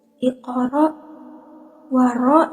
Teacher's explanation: cara bacanya itu ditebalkan seakan-akan memenuhi rongga mulut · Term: tafhim